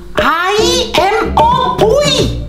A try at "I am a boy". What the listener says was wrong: 고조 똑바로 안 할게요. 고조 그 억양이 다르잖네.